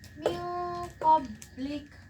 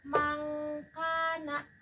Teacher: Nah, di antara ke-15 huruf ikfa dan kaf memiliki huruf yang paling jauh di antara makhrajnya. Karena huruf qof dan kaf berasal dari pangkal lidah. Nah, sehingga menghasilkan suara seperti bunyi ngah